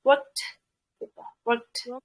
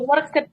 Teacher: Untuk yang belakangnya regular seperti ini, cara bacanya itu aspirated atau keluar udara. Jadi kayak biasa aja work-nya, terus D-nya itu kayak keluar udaranya. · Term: aspirated D